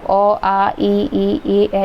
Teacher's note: जिनका उच्चारण करते समय ओष्ठ गोल नहीं होते हैं बल्कि वो फैल जाते हैं, वो सारे अवृत्तमुखी में आते हैं, यानी 6 अ, आ, ई, ए, ये सारे आपके अवृत्त भाषा में आते हैं।